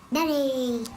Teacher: His resonance is sounding really good now, and there's no air that we can hear coming down his nose.